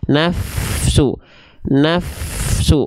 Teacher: dia bunyinya dan suaranya dan nafasnya dialirkan ketika Fa dalam kondisi sukun · jadi hurufa itu punya sifat yang namanya hams dan rokhwah artinya mengalir nafasnya mengalir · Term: huruf Fa